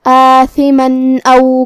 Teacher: ہم یہاں تنوین ظاہر کریں گے اور بغیر غنہ سے یہ حکم کو ادا کریں گے · ثا کی ادائیگی زبان کے سر اور اوپر والے دانتوں کے اندرونی کناروں سے ہے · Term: اظہار, حرف الثا